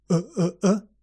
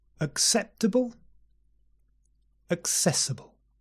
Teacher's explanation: the first two words begin with schwa do you remember the stupid caveman uh relax the lips relax the mouth